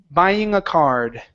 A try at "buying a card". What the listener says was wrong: Buying a card at the store.